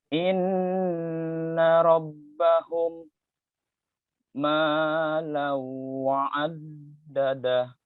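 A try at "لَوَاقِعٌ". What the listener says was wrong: Launya sedikit lagi ya. Lau, ma-nya kurangi, launya yang ditambah.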